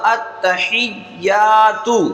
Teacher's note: اب یا کے ساتھ الف ہے تو جس حرف کے ساتھ الف ہوتا ہے تو اس کو ایک الف کے برابر کھینچ کر پڑھتے ہیں۔ تو یہاں پر یا کو ایک الف کے برابر ہم کھینچ کر پڑھیں گے